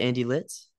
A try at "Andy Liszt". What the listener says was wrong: List. You don't pronounce the Z.